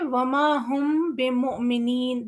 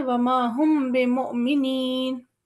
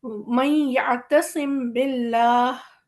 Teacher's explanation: मीम को हम इस तरह से पढ़ रहे हैं कि वो अदा भी हो रहा है लेकिन ज़ाहिर भी नहीं हो रहा